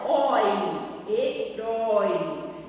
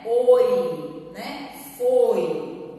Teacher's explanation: O som do O é aberto, né? Oi, herói. Enquanto que aqui no O de foi, o O é fechado, né? Oi, né?